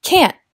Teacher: es más común prepararse para hacer el sonido, pero no liberar el aire, “can’t”, a menos que estés hablando muy formalmente.